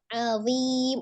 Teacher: ujung lidah menempel di ujung gigi seri atas. ujung lidahnya sedikit keluar ya